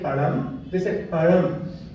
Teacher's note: It is neither la nor ra, is somewhere in between.